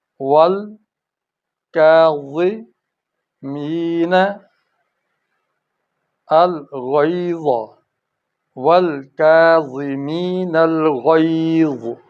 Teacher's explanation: دیکھو غین اور ضا کی آواز موٹی ہو گئی